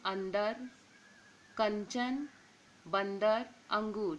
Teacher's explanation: अनुस्वार का उच्चारण केवल नासिका से होता है। यहाँ व्यंजनों के 5 वर्ग के अंतिम वर्ण के स्थान पर आता है, तब इसका रूप बिंदु होता है, जैसे अंदर, कंचन, बंदर, अंगूर।